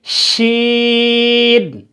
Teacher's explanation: زبان کا سینٹر یعنی زبان کی درمیانی جگہ یا بیچ کی جگہ جب اوپر کے تالو سے لگے، زبان کی بیچ کی جگہ یا سینٹر جب اوپر کے تالو سے لگے تو جیم، شین اور یا پڑھے جاتے ہیں۔ شین میں ایک صفت ہے جس کو عربی یا تجوید میں تفشی کہتے ہیں، پھیلاؤ، شور کرنا۔ تو اس کو اس صفت کے ساتھ پڑھیں گے، یعنی شین۔